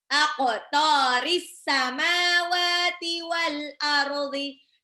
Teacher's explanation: Belakangnya langsung ketemu sama alif lam samsiah ya, di alif sebelum samawati itu ada alif lam, tapi alif lamnya tidak dibaca langsung